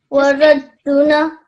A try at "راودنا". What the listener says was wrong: Make this ra a little bit longer, because again, this is راودنا.